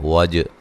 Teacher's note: جیم پہ قلقلہ کرنا ہے